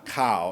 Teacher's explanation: is a low tone and a long vowel